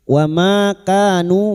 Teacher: Ma fathah diikuti alif, ka fathah diikuti alif, nu duma diikuti wawu sukun, masing-masing 2 harakat kita panjangkan mad tabi'i.